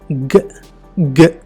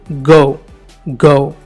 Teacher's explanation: ఇది ఒక voiced consonant. And this is a లీనెస్ అంటే దీన్ని మనము బలహీనంగా పలుకుతాం.